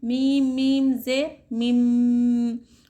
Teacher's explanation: यहाँ पर हम मिम पढ़ रहे ना कि मिन, ठीक है। नून को यहाँ पर हम साइलेंट कर दे रहे, नून को मीम से बदल दे रहे, हम नून को मीम से बदल कर गुन्ने के साथ इख्फा कर रहे हम, मीम मीम जे मिम, गुन्ना और इख्फा कर रहे, ठीक है।